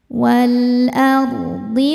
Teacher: Wal ardi ard ro sukun dibaca secara tafkhim karena didahului harakat fathah maka dibacanya tebal.